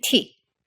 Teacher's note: unvoiced and has a lot more aspiration than its English counterpart